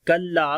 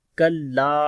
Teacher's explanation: کاف کو باریک پڑھیں گے، لام کو لمبا کریں گے، الف مدہ ہے